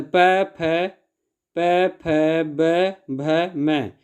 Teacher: इनके उच्चारण में ओठों का उपयोग किया जाता है, इसलिए इनके ओष्ठ व्यंजन कहा जाता है।